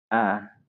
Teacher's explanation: But in the object personal pronoun, we say a. It's quite open.